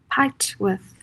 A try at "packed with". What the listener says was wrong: I thought that you were saying piped. This word. Packed. Packed with.